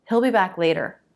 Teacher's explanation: we'll usually reduce that and change the vowel to it so it sounds like Hill